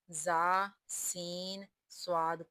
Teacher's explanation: को अदा करते वक़्त सीटी की तरह तेज़ आवाज़ निकलती है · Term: हरूफ सफ़ीरिया